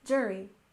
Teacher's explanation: we stress the first syllable in jury